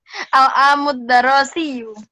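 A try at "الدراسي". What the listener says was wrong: bukan darosi ya, dirosi. Dirosi.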